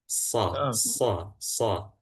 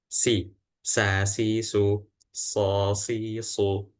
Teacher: kalau sin biasa aja bagian belakang yang enggak ditebelin ataupun enggak ditipisin juga · Akan tetapi ujung belakangnya bisa kita bedain di sini. yang sh ujung belakangnya itu ditebelin lidahnya sehingga rongganya menyempit. Sh. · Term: shad